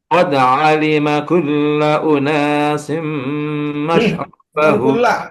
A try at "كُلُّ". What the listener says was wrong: Kullu. Bukan kula Pak Haji, kullu.